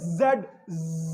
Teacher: सांस शुरू में रुक रहा है और वाइब्रेट कर रही है आवाज